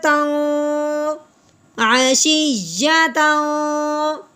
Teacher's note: تنوین پہ غنہ کریں گے، اخفا کریں گے